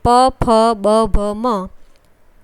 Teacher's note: પ ફ બ ભ મ એ ઓષ્ટય વ્યંજન છે એટલે કે એનો ઉચ્ચાર કરતી વખતે હોઠ પરસ્પર અડે છે અને હોઠ ના અડે તો આપણે એ શબ્દ એ અક્ષર બોલી